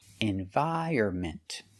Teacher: The stress is on the 2nd and 4th syllable.